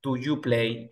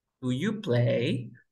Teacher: En inglés, tú vas a hacer eso, vas a elevar la voz al final.